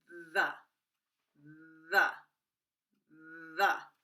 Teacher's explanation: The is created by placing your tongue between your teeth, but do not let the air escape. When you activate your vocal cords, the vibration comes through your teeth and it tingles your tongue. When we activate our vocal cords, the vibration travels through our jaw to our teeth. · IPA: ð